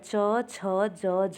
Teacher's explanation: च छ ज झ, ये स्पर्श संघर्षी व्यंजन होते हैं